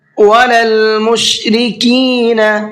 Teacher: یہاں پر مشرقین بڑا قاف نہیں پڑھنا ہے، اس لیے کہ یہاں پر چھوٹا قاف ہے۔ میں بتا اس لیے رہا ہوں یہ پوائنٹ کیونکہ اکثر لوگ مشرقین بڑا قاف کے ساتھ میں پڑھتے ہیں، حالانکہ چھوٹے قاف کے ساتھ میں ہے۔